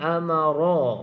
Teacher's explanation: Ra tersebut ra berbaris di atas, bacaannya bacaan tebal. Ra tebal. Amara, ra bukan amara.